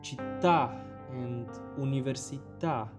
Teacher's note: All polysyllables stressed on the final vowel.